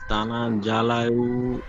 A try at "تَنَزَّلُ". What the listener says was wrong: তানা জালাল বলছেন, জালাল হবে না, জালুল। লাম লাম পেশ লুল উচ্চারণ হয়। তানাজ্জালুল